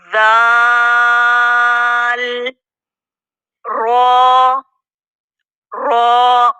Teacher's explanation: जुबान का सिरा या जुबान की नोक जब दांतों के किनारों को लगेगा तो दल अदा होगा